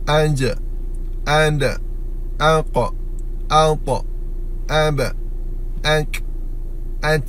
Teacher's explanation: sifat Syiddah yang berlawanan Rukhawah, dia tertahan.